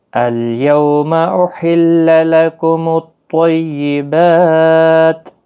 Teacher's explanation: احل ہا کو ادا کریں، وسط حلق والا ہا ہے